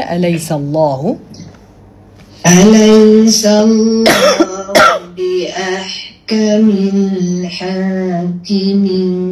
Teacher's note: Bunyi tersepit tu rasa ya Allah tersiksanya nak mengeluarkan huruf alif kan. Hamzah fathah dia bunyi dia relax. Walaupun kita punya vocal cord kita tertutup, tapi bunyi dia sangat relax kan.